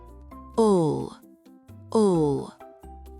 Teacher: Le bout de la langue est bien appuyé derrière les dents du haut. En fin de mot, le L est souvent plus sombre en anglais.